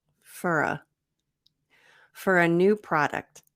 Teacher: notice the pronunciation so instead of for f f f fur so we have a reduction for to fur and we have connected speech linking with the r to the a